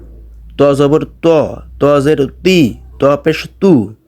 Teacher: ত এর উচ্চারণ করতে হবে আপনাকে একটু মোটা করে